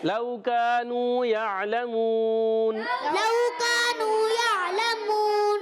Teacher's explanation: واو لین کو نہیں کھینچیں گے، مگر الف مدہ واو مدہ کو ہمیں ایک ایک الف کھینچ کر ادا کریں گے. · لو واو سنگ سے پہلے زبر، واو لین ہو جائے گا، نرمی سے ادا کریں گے